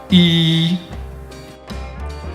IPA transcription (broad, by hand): iː